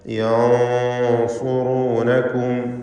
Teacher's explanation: സ്വാദ് ഇസ്തിഅലാഇൻ്റെ അക്ഷരമാണ്. തഫ്ഖീം ചെയ്യണം, തടിപ്പിച്ച് സ്വരഭാരത്തോടെ ഉച്ചരിക്കണം. അതുകൊണ്ട് തന്നെ സാക്കിനത്ത നൂനിനെ ഇഖ്ഫ ചെയ്ത് മണിച്ചുകൊണ്ട് ഉച്ചരിക്കുമ്പോൾ ആ മണിക്കലിലും തഫ്ഖീം വേണം.